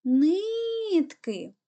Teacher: куди падає наголос на перший склад